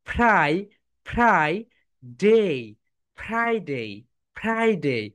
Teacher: এফ যখন তোমরা উচ্চারণ করবে উপরের দাঁত নিচের ঠোটের সঙ্গে টাচ করবে